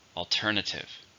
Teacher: How many syllables are in alternative? 4. Stress on the second.